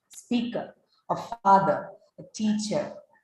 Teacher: So in that particular word, you do not actually pronounce the R. You don't articulate that R sound at the end of the word speaker. Instead, what you hear there is the schwa sound